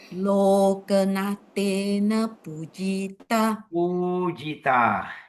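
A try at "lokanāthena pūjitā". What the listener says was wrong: Pujita. So long O, don't forget, Loka.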